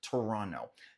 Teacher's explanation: Não pronunciamos esse T final de forma comum